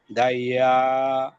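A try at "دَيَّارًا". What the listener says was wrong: ইয়াতে আয় একটু টান হবে, আবার বলি।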